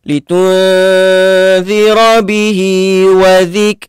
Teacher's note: Mad silah qasirah. Okey, panjang dia 2 harakat sahaja.